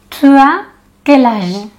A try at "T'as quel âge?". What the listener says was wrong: Mais regardez quand moi je prononce. T'as quel âge? Los franceses, cuando hablamos, ¿no? En oral, de manera amical, en vez de decir tu as, on va dire t'as. Donc, tu as quel âge? T'as quel âge?